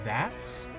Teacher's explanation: I don't drop the T sound because it's part of the ending noise